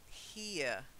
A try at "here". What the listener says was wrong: yeah, I think you just misread it as her, but here.